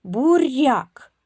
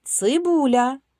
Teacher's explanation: Р м'який приголосний. Цибуля ль м'який приголосний